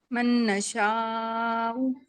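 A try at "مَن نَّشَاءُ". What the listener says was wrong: नहीं, गुन्ना तो आपने किया ही नहीं, इदगाम माल गुन्ना।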